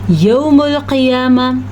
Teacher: ایانا، یا کی آواز کلیئر کر کے نکالنی ہے، یوم القیامہ، موٹا قاف اور آخر میں ہا کی آواز جو ہے اس پہ آپ کا فوکس ہونا چاہیے